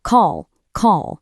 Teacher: It's fast, it's percussive, and it ends really abruptly. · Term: Short vowels